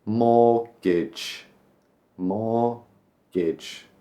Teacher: But we don't pronounce the T, and the end just becomes a jumbled sound.